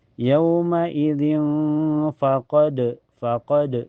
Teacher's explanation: Karena ee tanwin kasrah ketemu fa. Cara bacanya tanwin kasrahnya disamarkan ke fa dan ditahan sampai terasa ke hidung. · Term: ihfa ausat